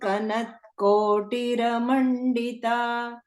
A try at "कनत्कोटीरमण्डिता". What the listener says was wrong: Can you see what is here? Kanat. There is a dirgha, okay? Kanat Kotiramandita.